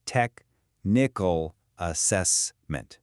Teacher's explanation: The main beats are on tech and cess.